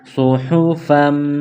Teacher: اس طرح فا میم 2 زبر فم، میم مشدد ہے تو یہاں غنہ کریں گے